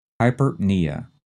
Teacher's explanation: Again, like the previous two, the first two syllables are run together fast. The stress is on the knee.